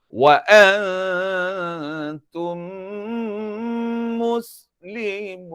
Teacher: Wa antum nampak bibir ditutup rapat selama dua harkat. Mus bunyi pada harkat tiga.